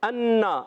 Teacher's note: حمزہ خوب واضح کریں گے اور نون مشدد میں ایک الف کا غنہ ہوگا